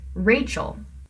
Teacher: you put the stress on the first syllable Rachel which means that it has to be a trochee right